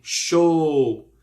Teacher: se pronuncia show, com 2 O mesmo. Show, que é um som único e prolongado.